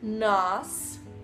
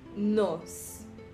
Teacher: Aqui bem mais aberto, nós. E aqui bem mais fechado, nos.